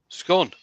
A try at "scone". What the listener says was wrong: No, the O has to be emphasized as an O because of the E that follows at the end.